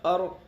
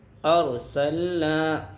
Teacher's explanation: را ساکنہ سے پہلے زبر ہے، را ساکنہ پور ہوگی، سین کے اوپر زبر ہے، زبر کو جلدی پڑھیں گے، تھوڑا بھی نہ کھینچیں۔